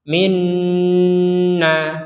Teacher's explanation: memberi dengungan pada Nun bertasdid